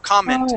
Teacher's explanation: accent on this E right here. So the accent goes at the very beginning.